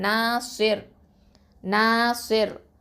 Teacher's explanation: அடுத்ததான் ரா கசரத்தைன் இருக்குது. இப்போ நம்ம நிப்பாட்டுறதுனால ரா சுக்குனா மாற்றிடுவோம்